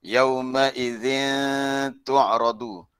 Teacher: Ikhfa hakiki kita punya lidah kita di tengah-tengah, tidak ke langit.